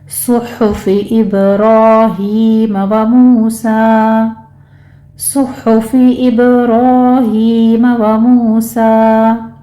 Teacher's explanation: صحف ابراہیم و موسیٰ، صاد کو پر پڑھنا ہے، اور ہا کو وسط حلق سے ادا کرنا ہے، دونوں پر ضمہ ہے، ہونٹ گول کر لیجیے، اور ابراہیم میں با کے اوپر قلقلہ ہوگا، را مفخم پڑھی جائے گی، اس کے اوپر فتح قائمہ ہے، 2 کاؤنٹ کریں گے، ہی میں یا مدہ ہے، 2 کاؤنٹ کریں گے، و موسیٰ میں بھی واو مدہ ادا کریں گے، 2 کاؤنٹ کر لینا ہے، اور آخر پر مدی وصل ہوگی، 2 کاؤنٹ کر لینا ہے۔